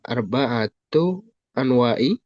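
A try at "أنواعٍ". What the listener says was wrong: nah pakai tanwinnya anwa'in, anwa'in. Mudhaf mudhaf ilaih.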